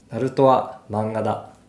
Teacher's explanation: I picked this sentence on purpose because it doesn't have any accented syllables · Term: pitch accent